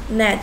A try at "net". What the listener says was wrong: 계속해서 at 소리 나고 있네. at, vet, net.